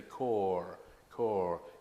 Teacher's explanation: You can hardly hear the R there, can you? But it is there if you listen carefully.